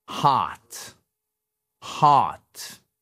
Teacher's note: C'est donc une voyelle qui est assez longue.